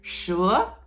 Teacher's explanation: you can hear that I started quiet and get louder as I go to the end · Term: tone two